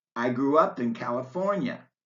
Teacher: when you say, I grew up in California, you stress up and not grew.